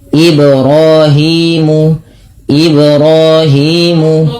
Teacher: pada lafal Ibrahim pantulkan pada lafal bacaan ba karena ia ada bacaan qalqalah